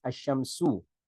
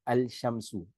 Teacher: when al is prefixed to a noun beginning with the solar letter, the lam or the L of al of alif walam, it is assimilated. Okay, so this is the process which we call idgham, okay, into the solar letter, the Shamsiya.